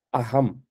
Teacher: இந்த இடத்துல கொஞ்சம் மெலிந்து ஒலிக்குது. அகம் இந்த இடத்துல ஹ அப்படின்ற மாதிரி ஒலிக்குது